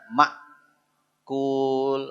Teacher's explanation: Hamzah sukun, bunyi dia hentakan